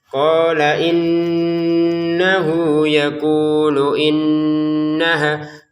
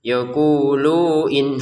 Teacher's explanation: Ini haknya panjang, 2 harokat juga ya. Qala innahu yaqulu innaha, kunya 2 harokat, lu-nya tidak panjang